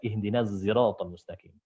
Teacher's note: zai ismam atau zai yang condong ke huruf shad